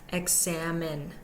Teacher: primary stress and the last syllable is also unstressed examine and the middle syllable is greatly stressed more so than the others